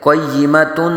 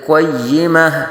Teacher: گولتا کو وقف میں ہا ساکن سے بدل دیں گے، قیمتن نہیں پڑھیں گے بلکہ قیمہ۔